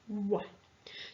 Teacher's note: we're making our lips really round to make that sound